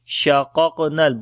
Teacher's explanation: Both qaf we read in heavy sound, and on the second qaf we make qalqala, and noon we connect with the lam.